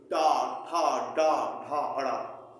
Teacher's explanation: तो हमारी जीहवा बीच वाले पीक पॉइंट को छू रही है तो वो मूर्धा है